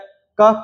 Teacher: क कंठ से बोला जाता है